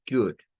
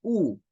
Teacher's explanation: es parecido a un sonido de u pero es más corto